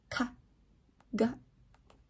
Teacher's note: There's full contact at the velum.